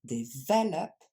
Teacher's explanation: Et le LOP, on l'entend à peine.